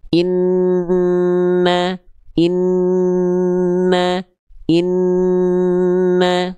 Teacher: huruf nun dan mim itu dia bukan cuman tekan, tapi ada suara yang suara yang mengalir dulu ke hidung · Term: dengung